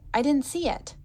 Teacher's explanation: she does a light release of a true T here at the end.